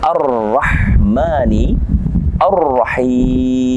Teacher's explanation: bertemu dengan huruf a di sini ada alif lam syamsiah maka alif lam nya tidak kita baca langsung masuk kepada huruf ro